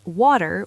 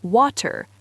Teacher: in British English, while we do link, we often have a slightly more clipped precision with our consonants, particularly the T sound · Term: true T